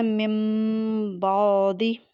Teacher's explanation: ہونٹوں کے اندرونی خشک حصوں کو آپس میں نہایت نرمی سے ملا کر آواز کو ناک کی جڑ سے ایک الف کی مقدار کے برابر نون ساکن کی آواز کو میم سے بدل کر ناک سے ادا کرتے ہوئے با کو سختی سے ادا کرنا ہے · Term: اقلاب